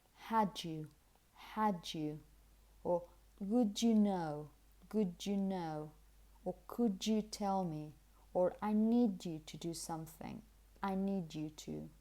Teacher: Another possibility is when the last sound in a word is a d sound, and then you have this sound here, like, as I said, like when you say you or year. What you get is not exactly ch, but rather j. The same sound you make when you say John or George. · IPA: /ʤ/